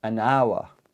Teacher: it's got a h but this H is silent we don't pronounce it